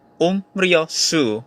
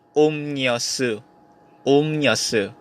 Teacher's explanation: One syllable ends in M and the next syllable starts with R. Kapag ang final consonant mo ay M at ang kasunod na initial consonant ay R or riol, yung riol mo magiging N na. So dun sa word na umryosu, you pronounce it as umnyosu.